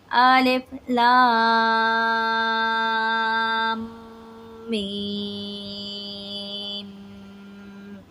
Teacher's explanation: لام کے اوپر مت ہے، تو یہ جو مت ہے اس مت کو 5 الف کی مقدار کے برابر کھینچ کر پڑھتے ہیں۔ میم پر تشدید ہے تو میم پہ ہم غنہ کریں گے اور 5 الف کی مقدار کے برابر کھینچ کر بھی پڑھیں گے۔